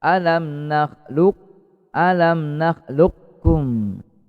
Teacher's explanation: kita sebut qafnya tapi tidak dikol-kolahkan. Ya, sebutnya makhrajnya saja tepat ya. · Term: idgham nakis